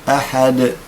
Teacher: أقف عند الدال بالقلقلة في حالة الوصل تذهب القلقلة